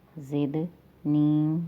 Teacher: ربی زدنی، دال پہ قلقلہ ہو رہا ہے، دال حروف قلقلہ میں سے ہے، قلقلہ کا معنی ہے آواز کا ٹکرا کر پلٹ کر آنا یا پھر آواز میں جنبش پیدا کرنا۔ زدنی یا مدہ ہے، 2 سیکنڈ آواز لمبی ہو جائے گی